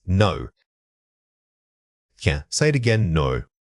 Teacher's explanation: when you deliver no, your voice should fall quickly and decisively. A strong downward tone conveys finality and certainty that the statement is complete.